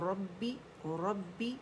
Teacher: रब्बी बा मुशद्दद है, रा मोटी होगी